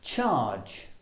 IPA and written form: tʆɑːdʒ (charge)